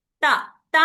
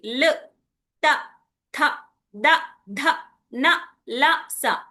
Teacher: అవి ఎక్కడైతే మన నాలిక తగులుతుందో ఆ స్థలాన్ని దానికి తగ్గట్టుగా పేరు పెట్టారు. ఇవి నాలిక దంతాలికి తగులుతుంది కాబట్టి వీటిని దంతవ్య అని పేరు వచ్చింది వాటికి